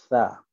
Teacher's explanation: tempat asal keluarnya adalah hujung lidah, hujung gigi atas. Okey, hujung lidah, hujung gigi atas. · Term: huruf sa